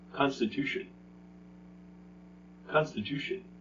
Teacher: it's the second to last syllable the one right before tion